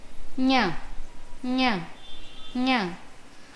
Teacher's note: अस्य उच्चारणस्थानं नासिकया सह तालु वर्तते।